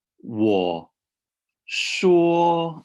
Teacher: sure is higher than war